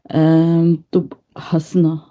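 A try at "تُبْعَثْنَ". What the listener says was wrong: It's a ayn भाभी, not ha. Tubasna comes from your throat, the lower part of your throat, वहां से आएगा।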